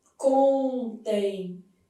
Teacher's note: esse M vai ter som semivocálico. Então, vai ter som de I. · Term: ditongo fonético decrescente